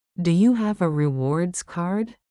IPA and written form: duː juː hæv ə rɪˈwɔːrdz kɑːrd (Do you have a rewards card?)